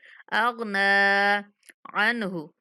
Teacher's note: नून पे गुन्ना नहीं होने देना क्योंकि नून के बाद हरूफ हलक़ी में से हा आ रहा है तो इसलिए यहाँ पे इज़हार करेंगे नून पे।